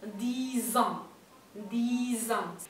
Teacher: La X final se pronuncia como S, 10, pero el contacto con una palabra que empieza con vocal o con H se va a pronunciar Z